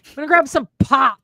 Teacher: they over enunciate the plosive consonant of both P's